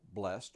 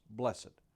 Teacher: You may pronounce it as one syllable, blessed, or with two syllables, blessed.